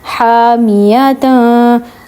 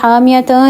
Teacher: اب یہاں پہ اخفا ہوگا کیونکہ حامیتاں اس لیے کہا کیونکہ دو زبر کے بعد تا ہے جو کہ حروف اخفا میں سے ہے